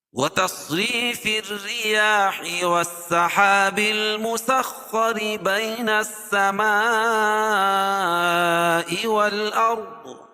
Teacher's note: صاد کو پر پڑھیں گے، اور را باریک پڑھی جائے گی